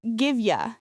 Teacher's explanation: This is a very common reduction of give you. The you becomes a soft ya.